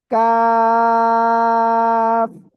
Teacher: জিহ্বার গোড়া থেকে একটু আগে বাড়িয়া তার বরাবর উপরে তালুর সঙ্গে লাগিয়ে আমরা উচ্চারণ করব।